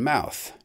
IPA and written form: maʊθ (mouth)